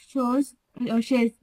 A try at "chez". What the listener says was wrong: Chez. This one is just chez, not chaise, okay? Chez.